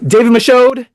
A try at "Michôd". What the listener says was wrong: Michôd. You don't pronounce the D on the end.